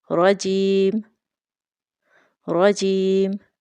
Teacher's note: را کے اوپر تشدید ہے تو را کو ہم شدت کے ساتھ پڑھیں گے، اور را کے اوپر زبر ہونے کی وجہ سے را کو موٹا پڑھیں گے، رجیم رجیم۔ اور یائے ساکن سے پہلے حرف پر زیر ہے تو یہ یائے مدہ ہے، اور اس کو بھی ہم 2 سیکنڈ لمبا کر کے پڑھیں گے، رجیم رجیم۔